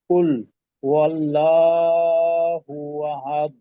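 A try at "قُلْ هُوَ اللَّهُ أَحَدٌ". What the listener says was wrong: আচ্ছা আল্লাহ শব্দের লামটাকে আরেকটু মোটা করার চেষ্টা করা। আর তালের কলকলাটা কিন্তু বোঝা গেল না।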